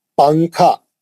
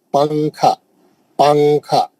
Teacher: نون کی آواز کو ناک میں سوئچ کر دیں گے اور اس کو چھپائیں گے، چھپا کے غنہ کریں گے. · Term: اخفا